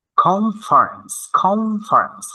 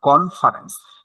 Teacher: N will be pronounced like M M M